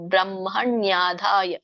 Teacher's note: ನಾವು ಮೊದಲು ಬ್ರಹ್ಮ ಅನ್ನಂಗಿಲ್ಲ ಬ್ರಹ್ಮ ಒಂದು ಮ ಹೇಳಿ ಆಮೇಲೆ ಹ ಹೇಳಬೇಕು